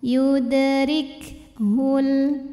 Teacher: Ada angin keluar ya, ada hamas di kaf.